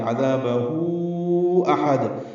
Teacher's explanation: حمزہ اقصی حلق سے، ہا وسط حلق سے، دال ساکن پہ قلقلہ وقف کرتے ہوئے